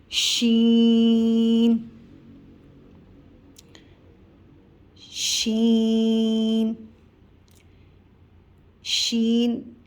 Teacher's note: شین زبان کے درمیانے حصے اور تالو کے درمیانے حصے سے ادا ہوگا۔ اوپر کے تالو کے درمیانے حصہ اور زبان کے درمیانے حصے سے شین کی ادائیگی ہوگی۔